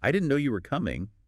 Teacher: try it with a little lift, a little emphasis on no and coming. Like, I didn't know you were coming.